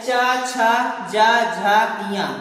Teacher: दूसरा है तालव्य, मतलब ऐसे वर्ण जिनका उच्चारण करते समय हमारी जीवा तालु को स्पर्श करती है वह तालव्य कहलाते हैं। च, छ, ज, झ, इया, मतलब च वर्ग तालव्य वर्ग कहलाता है।